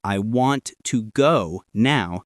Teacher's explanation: in the sentence, I want to go now, the words want and go are stronger. Practice reading short sentences and exaggerating the stressed words.